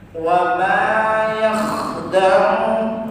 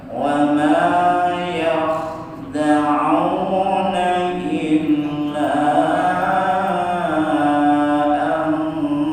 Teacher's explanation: agak menyempit sehingga terdengar ada ngoroknya, tapi jangan terlalu kasar